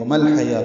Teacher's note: وما الحیا پیچھے پڑھ چکے ہم. وما الحیا لام ساکن بے اظہار قمری، حا وسط حلق سے ادا ہوگا. یا کھڑا زبر دو حرکات لمبا کریں گے، واو نہیں پڑھیں گے.